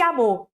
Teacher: supressão de uma vogal átona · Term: Elisão